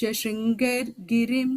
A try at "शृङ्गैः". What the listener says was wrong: the second line la Shringaihi. That ir that you said Shringair you said. The ir becomes a visarga, so Shringaihi on the second line.